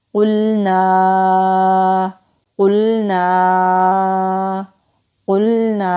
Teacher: قاف کو لام سے ملائیں گے، مستعلیہ حروف میں سے ہے، موٹا پڑھیں گے